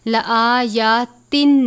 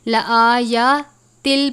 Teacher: تنوین کے بعد لام ہے، لام اور را پر ہم نے پڑھا تھا کہ غنہ نہیں کرتے، تو ہم اس لفظ کو لآیاتن نہیں پڑھیں گے بلکہ لآیاتل پڑھیں گے اور غنہ نہیں کریں گے